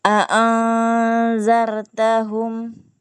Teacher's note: berikan ikhfa-nya. Ikhfa itu samar-samar berdengung. a'anzartahum Ya.